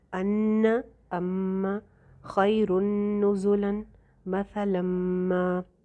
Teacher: غنہ کر کے پڑھیں گے کیونکہ شد ہے نون کے اوپر اور میم کے اوپر